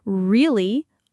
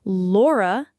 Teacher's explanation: The contrast is crucial for R. No tongue tip contact at the front. for L definite tongue tip contact.